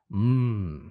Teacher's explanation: the lips close, and that's where the airstream is being stopped, but the air actually leaves the nasal cavity, and that's what gives it that different quality. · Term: nasals